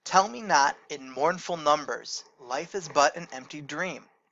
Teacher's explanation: stressed syllables alternate with unstressed syllables four times in each line stressed unstressed stressed unstressed stressed unstressed stressed unstressed on each of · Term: trochaic tetrameter